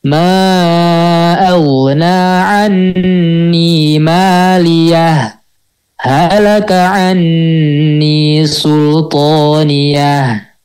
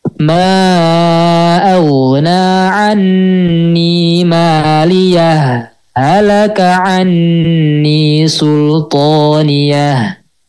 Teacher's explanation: Nah, jadi kalau menurut Imam Hafiz Jalur Sitibiyah ada dua ternyata, yaitu sakta dan idraj. Yang pertama tadi berhenti sejenak tanpa mengambil nafas. Yang kedua idghamkan.